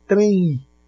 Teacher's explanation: Você fala um izinho, você fala uma semivogal. Então, se você fala uma semivogal, você tem aí um ditongo e um ditongo nasal.